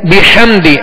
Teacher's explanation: اور آگے ہا کی آواز کو حلق سے درمیانے حلق سے ادا کریں گے اور واضح کریں گے. بحمدی ہا اس کو بھی درمیانے حلق سے واضح ادا کریں گے.